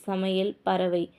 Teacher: வை வந்து ஒன்றரை மாத்திரை அரை மாத்திரை அந்த இடத்துல குறைஞ்சிடுது நெக்ஸ்ட் வந்து ஐகாரம் வந்து சொல்லுடைய இடையிலும் இறுதியிலும் வரும்போது ஒரு மாத்திரை அளவுல தான் ஒலிக்குது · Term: ஐகாரக் குறுக்கம், ஐகார குறுக்கம்